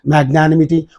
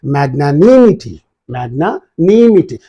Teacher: we pronounce all the word equally without giving any stress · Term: Indian pronunciation